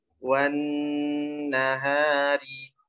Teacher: Nunnya ditahan dulu, tasydid. Selain ditekan dari waw neken ke nun, habis itu nunnya ditahan.